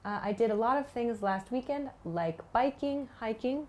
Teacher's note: I use the word like with kind of downward intonation to introduce that.